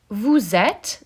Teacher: Vous êtes, the final E is silent.